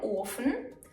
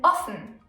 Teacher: O can be pronounced long, O as in Ofen, or short, O as in offen.